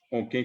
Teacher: A o qué. Y si es que yo digo o qué, con la E nasal